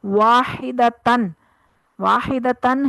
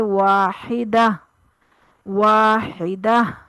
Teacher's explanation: واحدتن، واحدتن ہے تو اس کو جب ہم وقف کریں گے تو پڑھیں گے واحدہ، واحدہ. ہا کی آواز ساکن ہو جائے گی، تا کی آواز ہا کی آواز میں بدل جائے گی جو ساکن آئے گی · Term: ہائے ساکنہ